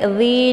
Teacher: Li dibaca panjang ada Ya Sukun sebelumnya harakat kisrah